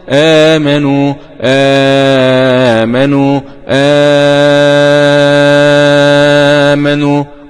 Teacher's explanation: قرأ ورش بتثليث البدل 2 4 6